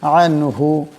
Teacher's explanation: আনহু, এখানে নুন সাকিন, কিন্তু এই নুন সাকিনের পর হা আসছে, তাই এই নুন সাকিনকে গুণা করা যাবে না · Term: বেলা গুণা